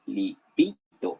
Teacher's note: La sílaba tónica es la bi, no es la li. Repito, es la bi.